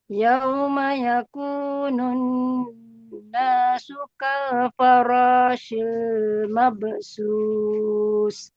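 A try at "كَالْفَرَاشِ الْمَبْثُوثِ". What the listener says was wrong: S-nya ujung lidah gini. Mabathu. Bunyinya mabathus. Nah, enggak. Ujung lidah keluar. Sedikit. Mabathu. Sus. Su. Masih terdengar seperti S biasa. Sus. Bukan sus.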